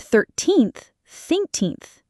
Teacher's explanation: And 13th thinkth is a double whammy. It starts with an unvoiced th and ends with an unvoiced th.